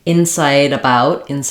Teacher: So if I'm just saying it by itself, I'm either going to say a true T, incite, or I might use an unreleased T, incite, where I don't really let that T out. If I'm linking to a vowel, incite about, then that T is going to turn into a flap.